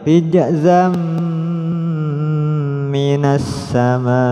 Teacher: jadi masukkan suara tanwin pada Mim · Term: Idam bunah